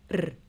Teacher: R is rolled in Welsh but don't overdo it